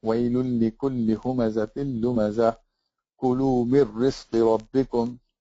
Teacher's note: No gunna, and joining them together as if the tanween didn't exist or the noon sakina didn't exist. Even though we do write it, we just don't pronounce the gunna.